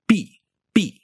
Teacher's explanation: you'd be saying a voiceless P without any aspiration at all.